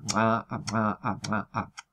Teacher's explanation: el postdorso de la lengua traba contacto con el velo del paladar y aísla una cámara de aire entre ese punto y un punto más anterior, que es donde se sitúa el punto de articulación en cada caso, ¿no? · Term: chasquidos